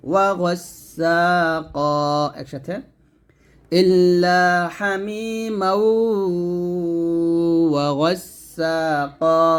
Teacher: এখানে গাসসাকা বলবেন না, কফ মোটা করে বলবেন।